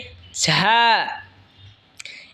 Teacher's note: ঝা জিহ্বার আগা সামনের নিচের দুই দাঁতের আগার দিকে লাগায় উচ্চারণ হবে ঝা